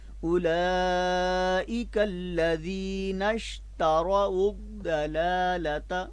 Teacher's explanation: پہلے لام پر کھڑا زبر ہے اور دوسرے لام پر صرف زبر ہے، تو لہٰذا اس صورت میں ہم پہلے لام کی آواز ڈبل کریں گے اور دوسرے لام کی زبر کو ہم لمبا نہیں کریں گے. آگے حرف تا ہے، اس کے اوپر بھی زبر ہے، تو ان لام اور تا دونوں حرفوں کی آواز زیادہ لمبی نہیں ہوگی، ٹھیک ہے.